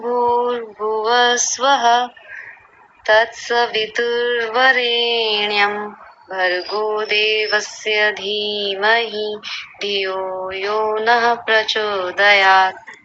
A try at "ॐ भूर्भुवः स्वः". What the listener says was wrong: ये पहला वाला विसर्ग शायद छूट गया था, इसको ठीक कीजिए। भुवः। हाँ जी, ओम भूर्भुवः स्वः आना चाहिए, वो छूटना नहीं चाहिए।